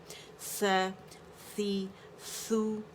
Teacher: باریکی سے ادا ہوگا, اس پہ بزنگ ساؤنڈ نہیں ہے